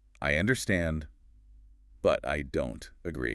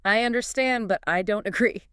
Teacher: >> We need to stress the key words here. >> The stress should be on understand and on don't.